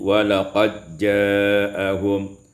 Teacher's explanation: idgham dal fi jim, diidghamkan dal pada jim menjadi walaqad ja'ahum.